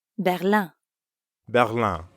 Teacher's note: Berlin ends in in, which in French becomes un. Un. Another nasal sound.